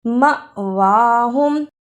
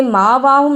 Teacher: مأواہم، اسے ماواہم نہیں پڑھنا، میم زبر الف ما، جس الف پر جزم ہو اس پہ جھٹکا لگا کر پڑھتے